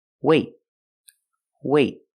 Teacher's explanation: have a vowel then we do a stop T that means you put your tongue up in the T position but you don't release